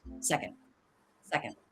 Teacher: So, it's low in pitch. It's flat. It's not stressed in this phrase. Also, we're not going to do a D release.